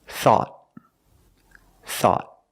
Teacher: At the end, the tongue goes up and makes a stop T.